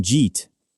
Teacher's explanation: Some people say it so fast it becomes one syllable.